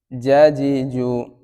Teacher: জিমের মাখরাজ কোথায়? জিহ্বার মধ্যখান তার বরাবর উপরে তালুর সাথে লাগবে।